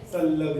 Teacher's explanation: अनुस्वाराच्या पुढे जर ल आला तर त्या ल सारखाच उच्चार करायचा, संलग्न. म्हणजे पूर्वीच्या जुन्या गणिताच्या पुस्तकात या असा अनुस्वार नव्हता, असं होतं संलग्न.